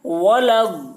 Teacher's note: الف لام کو نہ پڑھیں گے بلکہ بعد والے حرف ضاد سے ملا کر پڑھیں گے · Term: حروف شمسی